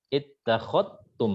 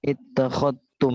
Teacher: Imam Syu'bah, ya ini kaidah usul, kaidah pokok dari riwayatnya Syu'bah, itu mengidghamkan huruf zal ke ta secara kamil, secara sempurna. Jadi zalnya hilang. Ittakhadtum langsung masuk ke huruf ta.